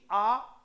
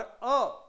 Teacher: आ विवृत स्वर है और अ अर्ध विवृत स्वर है, इसलिए इतना मुंह नहीं खोल सकते जितना कि आ में। आ में जिसकी जितनी इच्छा हो उतना मुंह खोलकर बोल सकता है।